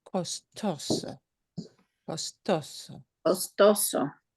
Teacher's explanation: The way we pronounce this word follows the rule of stress, which is last letter of the word is an O, and we punch the second to last syllable a little harder